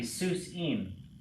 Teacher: the accent's on the last syllable, so it's going to be Seuss im.